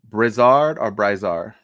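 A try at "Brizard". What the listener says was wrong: There ain't no A in that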